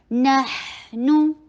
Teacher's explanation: ما ونحن، واو شارٹ، نون کے پر فتحہ، جبرے کو کھولیے، ہا کے پر رخاوا کرتے چلی جائیے، آواز کو چلائیے